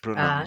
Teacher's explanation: To make the sound, rest the front of your tongue just behind your bottom teeth. The blade should be raised slightly. The sound is made low down in the front of the mouth. It is a front vowel. Lips are open and quite relaxed.